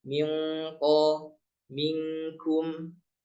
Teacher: Jadi intinya langsung ditempel ke makhrajnya qaf dan kaf. Jangan dibaca miqo, ini belum nyentuh. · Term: izhar